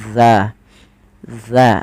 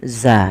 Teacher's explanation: Zal itu ujung lidah kita, ujung lidah menempel dengan gigi sari atas kita